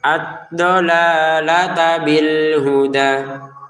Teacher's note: langsung aja digabungin, tidak ada panjang. Jangan dipanjangkan ad-dolalata bil huda, ad-dolalata bil huda.